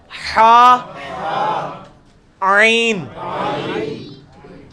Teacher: وسط حلق سے نکلے گا